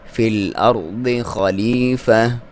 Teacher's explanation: خا کو موٹا پڑھیں گے، یہاں پہ یا مدہ ہے، فا کو باریک